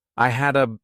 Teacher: so I combine hadda together as one word.